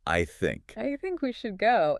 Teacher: They do not like to stop their breath between words. So, I think rarely gets pronounced as two distinct words. It gets mashed together into one fast sound. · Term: phonetic blending